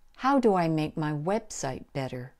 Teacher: working on so here how is important and website is important website is the most important word in the sentence so that will have the highest pitch